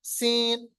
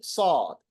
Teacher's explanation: सीन और सौद को फर्क करने के लिए सौद को होंठों को गोल कीजिए, मोटा कीजिए